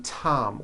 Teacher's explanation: the T sound is an unvoiced sound